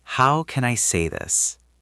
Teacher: Let's practice the pronunciation. It is a question, so your voice might go up a little bit or it might stay flat while you are thinking.